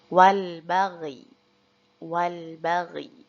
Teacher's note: ya-nya tetap harus kita baca dengan mengisyaratkan bibir meringis atau seperti senyum lebar, sehingga huruf ya tersebut tidak hilang dan tetap dibaca.